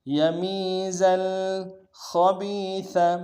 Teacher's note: خا کو گہرائی سے ادا کریں گے، با کو یا کے سامنے لانا ہے، یا مدہ ایک مقدار میں کھینچیں گے، سا کو باریک ادا کریں گے